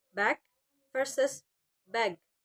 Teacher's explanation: Indonesian students may pronounce final G as C. So bag sounds like back.